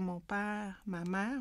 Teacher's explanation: moi je vais dire mon père, ma mère, on entend la diphtongaison